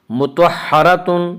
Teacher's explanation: مطہرۃ، مطہرۃ میں را کو پر پڑھیں گے، اس کا قاعدہ یہ ہے کہ را کے اوپر زبر اور پیش آئے تو را کو پر پڑھیں گے، را کے نیچے زیر آئے تو را کو باریک پڑھیں گے، یا را کے اوپر زبر ہے اس لیے را کو پر پڑھیں گے